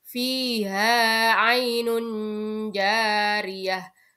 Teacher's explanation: Ketika ada nun sukun atau tanwin bertemu dengan huruf jim, maka ini dinamakan bacaan ikhfa dan cara membacanya adalah samar-samar.